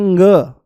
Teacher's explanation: जैसे ही आप ग बोलोगे तो वायु जो है वो मुंह से नाम मात्र के लिए बाहर निकलेगी, पर नाक से ज्यादा निकलने की कोशिश करेगी। और जैसे ही नाक से ज्यादा निकलने की कोशिश करेगी तो नाक के जो नथुने हैं उन पर जोर पड़ेगा हवा के ज्यादा बाहर आने से।